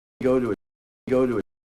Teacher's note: followed by a schwa because then we would lose definition so by keeping the ooh vowel we hear it as its own word